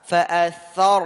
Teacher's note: ra-nya sukun dan sebelumnya ada tha fathah maka tebal. Tebalkan mufakhamah.